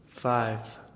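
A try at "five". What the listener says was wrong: You're saying an F. 5 with a V.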